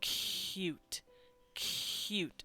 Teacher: it's got that H sound in between the the C and the U noise we actually make the noise because that's just the transition we